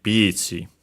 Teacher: accented on the P, of course, just like in English